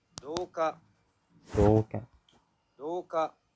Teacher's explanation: to me the oo sounded higher than the o, so I'm selecting Heiban.